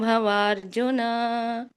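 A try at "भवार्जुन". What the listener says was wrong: ಸರಿ ಅಲ್ಲಿ ಭವಾರ್ಜುನ ಎಳಿಬೇಡಿ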